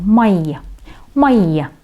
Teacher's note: на буковку «и» ставится такое ударение, как бы «мои». «Мои». Да, долго произносим как букву «и». Не «май», «май».